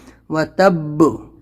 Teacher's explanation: با کے اوپر تشدید ہے تو تھوڑی سختی کریں گے رکنے کے ٹائم پہ